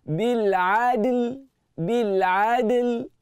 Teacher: dal itu dibaca dengan qalqalah surah